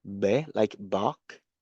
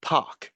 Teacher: because it is voiceless, meaning there is no b sound. You just say p. You just say p directly. And then there is a puff of air being aspirated. It means you can feel the air coming through.